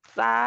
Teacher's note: मुंह खोलते हैं कहने के लिए साक तो जुबान की नोक वहां पे दांतों से पीछे हो जाती है यानी के पीछे हट जाती है